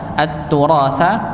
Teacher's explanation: alif lam syamsiyah, maka nunnya langsung masuk pada huruf ta pada yang bertasydid